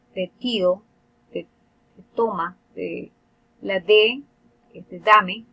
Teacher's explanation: la T y la D se producen en la zona de los alvéolos.